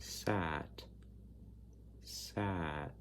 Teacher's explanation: the open front, unrounded sound, like in the word sat, with the tip of the tongue arching towards the front of the mouth, away from the roof of the mouth, with the lips unrounded and the mouth relatively open.